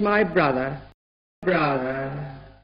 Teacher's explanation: In final position RP speakers could make it quite a lot more open, very like the STRUT vowel. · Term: schwa